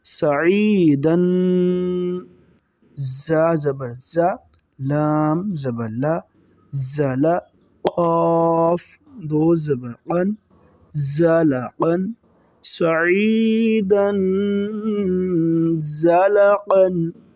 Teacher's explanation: دو زبر یعنی تنوین کے بعد زا آ رہا ہے جو کہ حروف اخفا میں سے ہے، یہاں پر ہم غنہ کریں گے